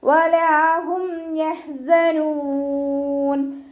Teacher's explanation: ഹ തൊണ്ടയുടെ മധ്യഭാഗമാണ് മഖ്റജ്. വസത്തുൽ ഹൽക്ക് സൗണ്ടിനെ ക്ലിയർ ആക്കി കൊടുക്കുക.